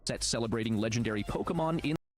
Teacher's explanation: I have that little creak in my voice sometimes, especially on like a higher thing when my voice swings up. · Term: vocal fry